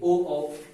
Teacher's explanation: ओ कंठ आ रहा है लेकिन ओष्ठ आ जाएगा आगे, देखिए ओ तो ये हो जाएगा कंठोष्ठ।